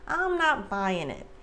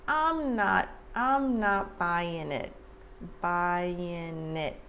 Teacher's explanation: the g at the end of buying is typically not pronounced like americans reduce the g at the end a lot sometimes